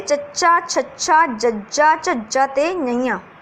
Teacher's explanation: ਤਾਲਵੀ ਹੁੰਦੇ ਹੈ ਕਿਹੜੇ, ਚੱਚਾ, ਛੱਛਾ, ਜੱਜਾ, ਝੱਜਾ ਤੇ ਨਈਆਂ, ਇਹ ਹੁੰਦੇ ਤਾਲਵੀ। ਤਾਲਵੀ ਵਿਅੰਜਨ ਉਹ ਹੁੰਦੇ ਹੈ ਜਿਹਦੇ ਵਿੱਚ ਜਿਹੜਾ ਜੀਭ ਦਾ ਮੱਧ ਵਾਲਾ ਹਿੱਸਾ ਹੈ, ਵਿਚਕਾਰਲਾ ਹਿੱਸਾ, ਉਹ ਆਪਣੇ ਤਾਲੂਏ ਨੂੰ ਛੂੰਹਦਾ ਹੈ ਤੇ ਫੇਫੜਿਆਂ ਦੀ ਜਿਹੜੀ ਨਿਕਲਦੀ ਹਵਾ ਉਹਨੂੰ ਕੀ ਹੈ, ਰੋਕਦਾ ਹੈ, ਠੀਕ ਹੈ।